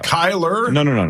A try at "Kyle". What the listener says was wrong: Kyle. No R. at the end.